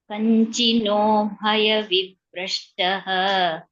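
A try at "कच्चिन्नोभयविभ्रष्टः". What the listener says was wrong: It's not Kanchin, my dear. Kaschinno Bhaya Vibrashtaha. Kaschin, yeah. Kaschinno Bhaya Vibrashtaha.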